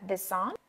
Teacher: this đưa lưỡi ra nhớ X của chữ this nha on Nói nhanh thì nói cái S on luôn chúng ta sẽ nghe là this on